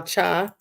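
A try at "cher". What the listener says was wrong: Sha. it's pronounced Misha or Shabe. CH, but it's pronounced SH.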